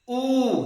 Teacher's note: जिन वर्णों के उच्चारण में ओठ जो है वृत्त के आकार का हो जाए वो क्या होता है, वृत्तमुखी। गोला ऐसे वृत्त के आकार का, गोलाकार।